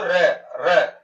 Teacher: आप बोलते हो र, तो जीवा क्या करती है आपकी, कंपित होती है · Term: प्रकंपित